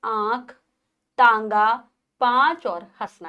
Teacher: अनुनासिक, जिसको चंद्र बिंदु भी कहा जाता है, का उच्चारण करते समय श्वास मुंह और नाक दोनों से निकलती है और थोड़ी सी गर्म होती है,